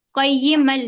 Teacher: काफ ज़फ या काफ या ज़बर कई ज़र ई कई मीम अलफ दो ज़बर मन कई मन का यार पम अब मीम पर देखिए दो ज़ की तनवीन है उसके बाद लाम आया यहां पर हम इदगाम ताम इदगाम करेंगे बिला गुना